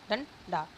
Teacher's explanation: अनुस्वर के उच्चारण में वायु नासिका से निकलती है और उच्चारण झटके के साथ होता है। इसमें अंग का जो उच्चारण है वो अंग की बिंदी का उच्चारण है वो झटके के साथ होता है।